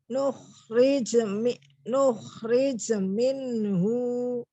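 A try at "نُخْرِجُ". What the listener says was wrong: jimnya bukan sukun loh, ini jimnya dhammah. Nukhriju. Nukhriju.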